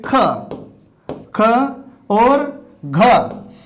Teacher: जैसे आ जाता है इसमें ख और घ, तो ये ख और घ का जब उच्चारण करते हैं तो इसका उच्चारण करते समय श्वास की मात्रा अधिक लगती है, इसमें हमारे मुख से हवा अधिक निकलती है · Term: महाप्राण